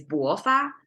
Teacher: we have to start from a low pitch to a high pitch to make this Rising tone